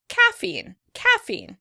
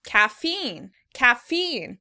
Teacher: In British English, the word would be stressed on the first syllable: caffeine, caffeine. In American English, the word is stressed on the second syllable